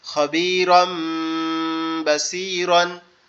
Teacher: আমরা এই যে তানবিন আছে, তানবিনের যে রটা আছে এটাকে মিম দ্বারা পরিবর্তন করব, তানবিনটাকে মিম দ্বারা পরিবর্তন করব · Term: ইকলাব